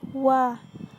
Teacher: Makhraj huruf waw terletak pada dengan menggabungkan dua bibir ke depan dengan mengangkat lidah bagian paling dalam.